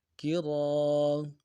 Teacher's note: ایک الف مدار میں کھینچنا ہے اور را کو موٹا پڑھنا ہے